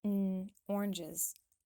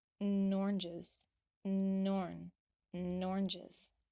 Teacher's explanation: there's another link that happens between the n sound and the word oranges so instead of separating them like um oranges we link them